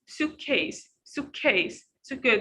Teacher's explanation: we don't stress on the second part because we have the first part